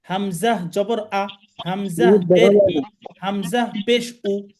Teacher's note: কন্ঠনালীর শুরু থেকে শক্তভাবে উচ্চারণ করতে হবে। · হামজা হলকের শুরু হতে শক্তভাবে আদায় হয়। হলক বা কণ্ঠনালী, কণ্ঠনালীর 3টা ভাগ রয়েছে: কণ্ঠনালীর শুরু, মাঝখান এবং শেষ।